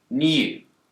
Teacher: The word yod describes a y sound. In the word new, Brits will tend to pronounce a y sound here